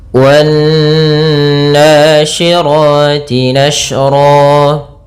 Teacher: Pada bacaan wan nasyirati, di sini ada alif lam yang dimana di sini kita namakan dengan alif lam syamsiyah, yang mana alif dan lamnya ditulis tapi tidak dibaca, sehingga kita langsung membaca pada huruf nun yang bertasydid. Di sini ada bacaan namanya gunnah, yaitu nun yang bertasydid.